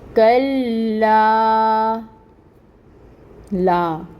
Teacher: لام کے اوپر تشدید ہے، ٹائم ٹیکنگ ہوگا، اور الف سے پہلے فتح کی حرکت لا پہ آ رہی ہے، تو اس لا کو ہم 2 حرکت کے برابر پڑھیں گے، 2 کاؤنٹس کے برابر پڑھیں گے، کیونکہ یہاں پر الف مد ہو رہی ہے۔ کلا، لا، یہاں پہ بھی الف سے پہلے فتح کی حرکت، تو 2 حرکت کے برابر، اور رول ہو رہا ہے الف مد کا۔